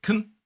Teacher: The weak form is can and uses the schwa.